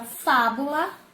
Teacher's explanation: e fábula a sílaba tônica foi a antepenúltima · fábula tem acento pa então fa é a sílaba tônica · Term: proparoxítona